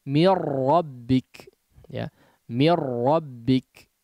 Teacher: nun sukunnya betul-betul langsung melebur kepada huruf ra. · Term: idgham bila gunnah